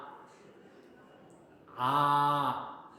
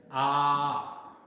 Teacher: this is the back part of the tongue that we आर using to produce the sound आ